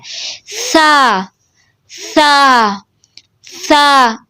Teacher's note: سا زبان کی نوک کو سامنے والے اوپر کے دو دانتوں کے کناروں سے لگانے سے ادا ہوتا ہے۔ سا زبان کی نوک کو باہر نکالیں اور اوپر والے سامنے دو دانتوں کے کناروں کے ساتھ لگا دیں اور نرمی سے اور باریک آواز میں پڑھنا ہے۔ سا سا سا، یہ دو حرفی ہوتا ہے، اس کو تھوڑا سا کھینچ کے پڑھتے ہیں، ٹھیک ہے؟